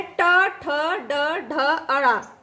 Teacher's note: ये मूर्धा से बोला जाता है। मूर्धा जो तालु और गले के और जीभ के बीच में होती है।